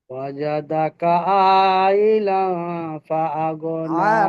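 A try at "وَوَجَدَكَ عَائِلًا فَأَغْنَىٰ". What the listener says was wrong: টান হবে ওয়া ওয়া ওয়া ওয়া ওয়াজাদাকা عائلا فأغنى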